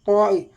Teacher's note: ഇത്തിബാക്ക് എന്ന് പറഞ്ഞാൽ നാവിന്റെ മധ്യം മധ്യഭാഗം അണ്ണാക്കിലേക്ക് ചേരലാണ്